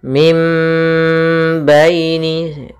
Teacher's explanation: suara nunnya diganti dengan suara mim dan kita tahan gunahnya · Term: iqlab